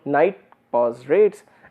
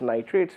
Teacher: I am just introducing a pause, nit pause rates, and if I am not introducing a pause, it is nitrates